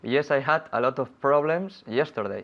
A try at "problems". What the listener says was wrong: Yeah, we don't pronounce the E in problems.